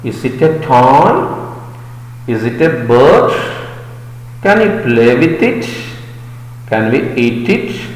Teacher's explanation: a question in a rising tone